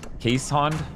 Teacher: it's not an sh sound it's just an S and then an H sound